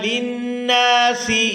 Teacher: یہاں نون مشدد پر غنہ کریں گے اور نون کو الف مدہ کی وجہ سے کھینچ کر بھی ادا کیا جائے گا